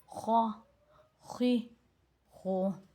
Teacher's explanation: خا موٹا حروف ہے اور موٹی آواز میں پڑھا جائے گا، اس کو منہ گول کر کے پڑھا جائے گا۔ خا زبر خا، خا زیر خی، خا پیش خو، خا خی خو۔